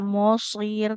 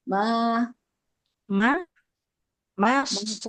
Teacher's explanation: Nah, huruf mimnya nggak boleh ikut tebal ya.